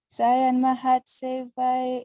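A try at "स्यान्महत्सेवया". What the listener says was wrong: You gotta say Syan, Syan, Syan, Syan Matseva. Syan Matseva.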